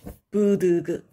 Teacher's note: 유성 파열음과 성대를 울려서 나는 파열음이죠.